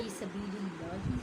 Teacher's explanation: اللہ سے پہلے زیر آئے تو اللہ کو باریک پڑھیں گے